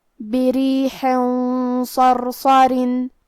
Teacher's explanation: صاد حروف الاخفاء میں سے ہے تو ہم یہ تنوین کو چھپاتے ہوئے اور غنہ کے ساتھ یہ حکم کو ادا کریں گے. اور کیونکہ صاد حروف تفخیم میں سے ہے اور غنہ اپنے اگلے والے حرف کا حکم لیتا ہے تفخیم میں اور ترقیق میں، لہذا ہم یہ غنہ کو بھاری آواز میں پڑھیں گے